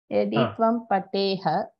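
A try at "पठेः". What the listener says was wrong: Patehe. Pateha na patehe. Yadi tvam patham patehe.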